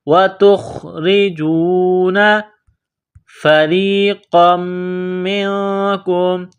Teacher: را کے نیچے زیر ہے تو را کو باریک کرنا ہے، را کو یا کے ساتھ ملانا ہے۔